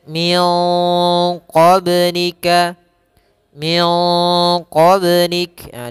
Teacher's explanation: nunnya kita semarkan kepada huruf q dan huruf q ini termasuk huruf istila maka agak sedikit ditebalkan ikhfanya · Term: bacaan Ikfa